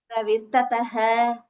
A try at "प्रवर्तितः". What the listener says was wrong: Pravartitah. pravartitah is the pronunciation, but you're saying we.